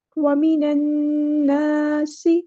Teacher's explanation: سین میں سیٹی واضح کریں گے اور یہاں پر ہم سین کو لمبا نہیں کریں گے کیونکہ حرکات کو ہم لمبا نہیں کرتے ہوتے.